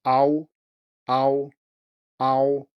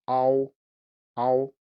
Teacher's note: maybe you can hear that this ah sound is further back. Ow, ow.